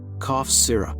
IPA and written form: kɔf ˈsɪrəp (cough syrup)